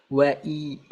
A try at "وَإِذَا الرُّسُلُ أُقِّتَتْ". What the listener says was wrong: Jangan neken wa'i. Jangan neken wa. Jadi kurang apa namanya? Kurang mulus. Jadi kehentak-hentak.